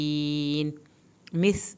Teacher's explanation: सीन को सीटी की आवाज़ निकालें